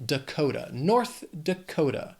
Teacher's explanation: Then we have North Dakota, 4 syllables, but Dakota has 3 syllables and the stress is on that second syllable,